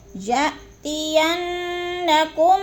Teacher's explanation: یا پہ حمزہ ساکنہ ہے، جھٹکا دے کے پڑھیں گے۔ یَأْتِيَنَّكُم، کم پہ جو میم ساکن کے بعد میم مشدد آ گیا ہے تو ادھر ادغام شفی ہو رہا ہے، سختی سے جماعوں کے ساتھ غنہ کریں گے۔